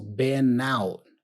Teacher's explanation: the N there for been is also joined with the O for out.